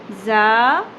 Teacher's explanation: تو ہم کاؤنٹ کو بیچ میں سے ہٹا بھی دیں تو ہمیں یہ کانسیپٹ کلیئر ہونا چاہیے کہ الف سے مراد کیا ہے، ایک الف یعنی کہ 2 حرکات۔ جتنا ہم ز زبر ز ایک حرکت کھینچتے ہیں، اس سے ہم نے ڈبل کھینچنا ہے